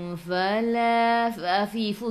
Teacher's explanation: gigi atas menyentuh perut bibir bawah